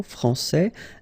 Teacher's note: Okay, so français, here you get this final S that you don't pronounce